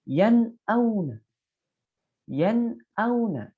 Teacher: maka nun matinya atau tanwinnya harus dibaca dengan jelas dan tidak ditahan. Kesalahan yang sering terjadi adalah sudah jelas membacanya tetapi ditahan. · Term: izhar halqi